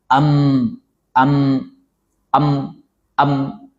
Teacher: membaca terlalu kuat berlebihan dengan suara jahar tidak sesuai dengan sifat mim